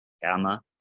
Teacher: It kind of makes a G sound, but kind of like a G more in the back of your throat.